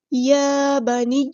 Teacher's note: یا پر کھڑا زبر ہے یعنی حرکات مد آئی ہے تو ایک الف کے برابر لمبا کریں گے